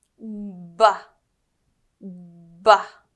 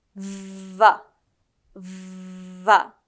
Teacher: The B and the V sounds are voiced, meaning that your vocal cords vibrate.